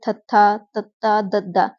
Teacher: ਜਦੋਂ ਜੀਭ ਦੇ ਅਗਲੇ ਹਿੱਸੇ ਦੁਆਰਾ ਉਚਾਰਨ ਕੀਤਾ ਜਾਂਦਾ ਹੈ। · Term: ਦੰਤੀ